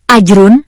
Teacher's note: Membaca yang benar pada lafal ajrun adalah memantul atau qalqalah yakni pada huruf jim yang disukun.